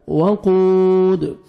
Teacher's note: दाल साकिन कलकला करेंगे, double sound आएगा